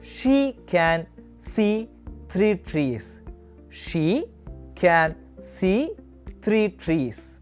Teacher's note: The first one is E as in C tree. It is the long version of the E sound. Your tongue will be in a forward position.